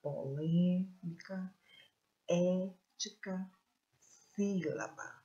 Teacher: Então, a sílaba forte está na antepenúltima sílaba.